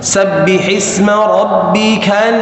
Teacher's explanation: Harus diucapkan rabbikal langsung dari kal masuk langsung ke hamzah. Jangan lepas dulu. Kalau dilepas maka akan mantul dia.